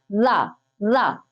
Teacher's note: उच्चारण में जिह्वा नीचे की ओर लुढ़कती है, तो उसको कहा जाता है लुंठित। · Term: लुंठित या प्रकंपित व्यंजन